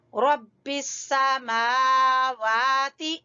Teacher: मा वा दोनों को लंबा करेंगे क्योंकि खड़ी जबर हैं। रा को पुर पढ़ेंगे।